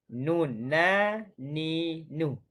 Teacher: Hujung lidah gerak bawah sikit daripada makhraj huruf lam, bertemu dengan langit berhadapan dengannya. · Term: huruf nun